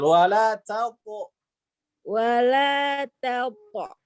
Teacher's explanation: ta itu tipis. Wala taqo, baru to-nya yang tebal.